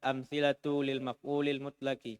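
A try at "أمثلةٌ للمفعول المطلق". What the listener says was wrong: Tanunya amthilatun lil maf'ul mutlak.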